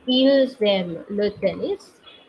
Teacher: since the verb aimer is starting with a vowel, we have to pronounce S